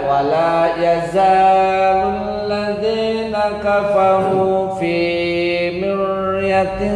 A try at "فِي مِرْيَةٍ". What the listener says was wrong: Nah, masih tafkhim. Miryatim tipis. Miryatim.